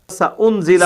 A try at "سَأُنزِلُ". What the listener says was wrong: سأنزل سأنزل نہیں ہے بیٹے, انزل لام کے اوپر زبر نہیں ہے, لام کے اوپر پیش ہے, پیش لام پیش لو.